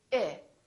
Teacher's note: So we don't say E, we say I. Very neutral, very relaxed.